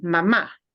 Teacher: when you really mean mom you need to punch the ah at the end mama because otherwise it sounds like the verb that means a